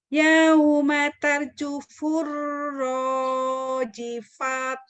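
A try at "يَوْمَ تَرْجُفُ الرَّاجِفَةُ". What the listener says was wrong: Kayaknya jadi ha, rojifah. Rojifah.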